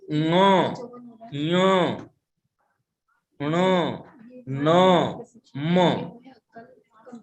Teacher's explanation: इनका हम उच्चारण मुख के साथ साथ नासिका के से भी करते हैं। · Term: नासिक ध्वनियों